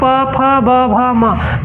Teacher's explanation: पांचों वर्ण जब पढ़ते हैं ना तो हमारा होठ सट जाता है आपस में। देख लीजिए एक बार, प फ ब भ म, तो इसका उच्चारण स्थान हो जाएगा ओष्ठ।